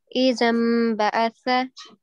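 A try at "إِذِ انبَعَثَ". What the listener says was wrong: Izim. So it's a kasra, right? Izim ba'atha.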